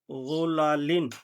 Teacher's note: غا پہ زو، لام زبر لا، غلا، لام دو زیر لن، غلا لن، غا پر پڑا جائے گا۔ اور اس میں خصوصی خیال رکھنا ہے کہ لام لمبا نہیں ہونا چاہیے